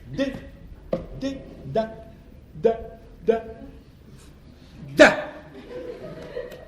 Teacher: la consonne D par exemple se prononce en donnant du bout de la langue au-dessus des dents d'en haut. D d de da de da.